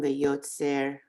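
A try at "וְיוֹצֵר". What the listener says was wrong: wait a minute, just speaking of the letters that are very similar, V'yosed, it's a daled, not a resh.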